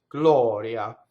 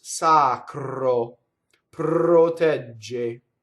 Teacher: So that's the rule. Surrounded by vowel, it's flipped. Glɔria. Hitting a consonant, it rolls. Sacro. Protɛgge.